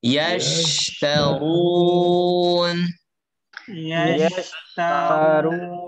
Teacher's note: Lihat, jangan diputus ya. Sya, jangan diputus. Karena dia rokhawah.